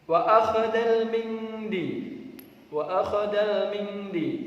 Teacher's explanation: ini ada bacaan nun mati bertemu huruf Dal maka harus dibaca ikhfa